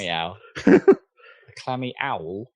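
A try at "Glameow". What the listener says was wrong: No, with a G. No, at the start. Glammeow.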